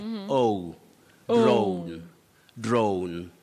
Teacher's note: you say it with what we call a slight vowel glide